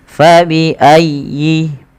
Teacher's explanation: Fa, nafarnya alif mengalirkan nafas. Fabi ayyi, tekan ya-nya tapi dengan lembut karena ya termasuk huruf lin